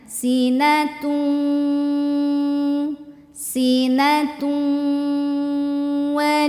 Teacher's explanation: sinatu nah ini wau e w eh tanya barisnya dommah tanwin domah tanwin kalau ketemu wau maka masukin langsung ke wau Jadi bukan tun lagi tapi tu Sambil nahan masuk ke wau